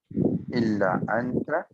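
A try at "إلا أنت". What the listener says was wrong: ইল্লা আতা, নাকের ভিতর দিয়ে উচ্চারণ করতে হবে। নুন সাকিনের পর ইকফা হরফটা আছে।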